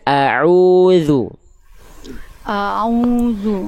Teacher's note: Tadi Bunda melafalkan ain dan hamzahnya itu jadi kurang jelas. Harusnya a jelas hamzahnya a. Lalu ain dilafalkan dari tengah tenggorokan. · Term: huruf ainnya